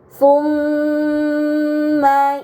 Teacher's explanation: terdapat mim bertasydid, ini dinamakan gunnah, maka harus dibaca dengan gunnah yang dipanjangkan